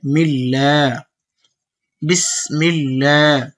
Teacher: বাসিনজের বিস, মিম লামজের মিল, এখানে লামের উপর তাসদিদ দেখা যাচ্ছে, তাসদিদ দুইবার উচ্চারণ হয়, আর এখানে যে জজম পড়লাম এটা একবার উচ্চারণ হয়।